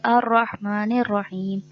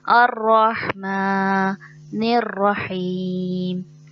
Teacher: الرحمن الرحیم، الرحمن میں میم پہ جو آپ کو کھڑا زبر نظر آ رہا ہے، عموماً وہاں جو غلطی ہوتی ہے کھڑے زبر کو زبر دے دیتے ہیں، جیسے الرحمن الرحیم، ایسے نہیں، کھڑے زبر کو 1 الف کے برابر کھینچتے ہیں، جیسے جتنی دیر ہماری ایک انگلی کو کھولنے میں لگتی ہے اتنی دیر اس کی ادائیگی میں لگتی ہے، الرحمن الرحیم۔